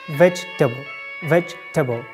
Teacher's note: We have just two syllables, veg and table